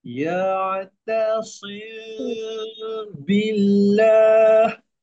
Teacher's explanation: Dia jangan tutup habis bibir ya. Kalau tutup habis bibir, dia dah terbuat bacaan idgham.